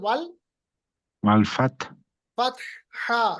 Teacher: हा वस्ते हलक से निकलता है।